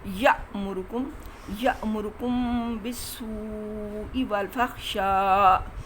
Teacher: اب یہ یا کا جو الف ہے یہ اس کے اوپر جزم ہے، یہ الف جزم والا آپ کو پتہ ہے حمزہ ہوتا ہے، اس میں آپ نے تھوڑا سا جھٹکا دینا ہے